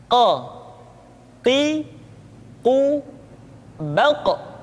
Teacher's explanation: huruf q diucapkan dengan cara menyentuhkan pangkal lidah kita dengan langit-langit bagian belakang Q Qi qu baq diucapkan dengan suara yang tebal dan dalam · Diucapkan dengan suara yang tebal dan dalam posisi sukun, maka terdengar pantulan suara. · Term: huruf Qaf